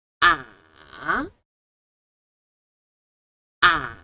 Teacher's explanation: It kind of like you are riding a roller coaster. It goes down and then up again. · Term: third tone